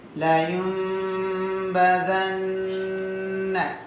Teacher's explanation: லயும்பதன்ன ஷத்தா பெற்ற நூனில் குன்னா செய்யணும்